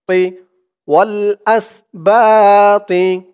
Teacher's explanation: ওয়াল আস বা তি তি, তোর উচ্চারণটা খেয়াল করবেন, একেবারে তি বলা যাবে না, তি বললে কিন্তু তার উচ্চারণ চলে আসবে, বলতে হবে তি, মুখটা হালকা একটু ভরপুর হয়ে যাবে এমন মনে হবে।